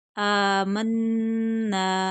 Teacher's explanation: नून मुशद्दद है, गुन्ना होगा, खींच कर पढ़ेंगे, आगे खाली अलिफ है।